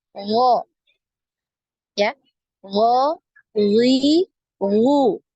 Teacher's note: Afwan, bukan suaranya, hurufnya ya, hurufnya lebih kuat, tidak ada aliran nafas ya, bukan ho gitu ya, tapi dia aliran nafasnya tertahan ya, makanya kuat ya, hurufnya lebih kuat.